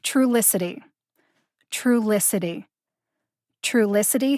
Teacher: the emphasis is on the first syllable true like the word truly true licity now i have a personal